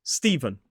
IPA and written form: ˈstiːvən (Steven)